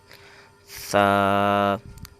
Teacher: اوپر کے دانتوں کے اندرونی کنارے پر جو دانتوں کا اندرونی حصہ جو ہے کناروں کا، وہاں پر زبان کو رکھیں گے